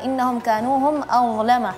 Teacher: Huruf dha yang perlu diperhatikan adalah dha-nya ya lidahnya keluarnya sedikit ya